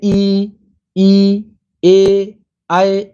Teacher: ई जो होता है वो अवृतमुखी है, वृत्त नहीं बनता